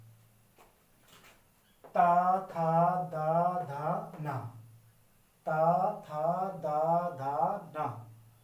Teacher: जब आप इनका उच्चारण करेंगे तो आपकी जीवा दांतों पर छू के जाएगी। ऐसा आप मतलब इनमें से आप पांचों में से किसी भी वर्ण का उच्चारण बिना दांत पर जीभ को लगाए नहीं कर सकते हैं। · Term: दंत्य